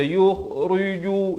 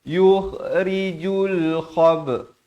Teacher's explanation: ra bila baris kasrah dibaca nipis. Bukan ri.